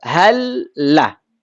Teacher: Lam ketemu lam. Lam sukun ketemu lam fathah. Maka dibaca dengan idgham juga. Hal lah. Suara al yang kita dengar, hal ini bukan suara lam sukun yang pertama, bukan.